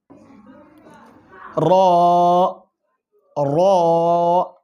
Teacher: 9 নম্বর মাখরাজ, জিহ্বার আগা তার বরাবর উপরের তালুর সঙ্গে লাগাইয়া।